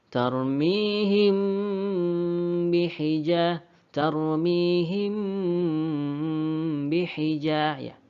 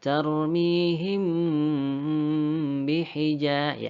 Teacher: dilamakan didengungkan dan juga dirapatkan bibir kita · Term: Ikhfa Syafawi